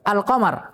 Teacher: al-qamar ketika kemasukan al dibaca jelas lam pada alnya al-qamar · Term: idhar qamariyah